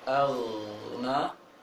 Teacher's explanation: Maka cara menebalkannya adalah ketika masuk atau membaca huruf ghain yang sukun, mulut agak membulat dan agak tempat keluarnya di tenggorokan atas